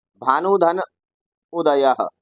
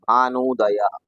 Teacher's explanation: ह्रस्व ऊ और ह्रस्व ऊ दोनों मिलाकर बन गए दीर्घ ऊ और बन जाएगा भानुदय।